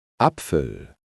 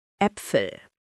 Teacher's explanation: The first one is dark and open. The second one is bright.